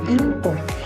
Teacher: asimilasi dari nasal N yang berubah menjadi M karena pendekatan dengan bunyi bilabial P atau asimilasi regresif